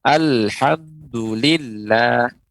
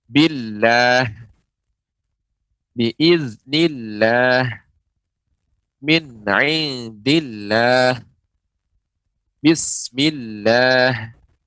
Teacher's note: lafaz Allah apabila huruf sebelumnya berharokat kasrah, ya maka dibaca tarqiq, yaitu tipis. Ya, lafaz Allah dibaca tipis.